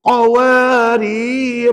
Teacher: sebut ra tadi dibaca Dua harakat hukumnya mad asli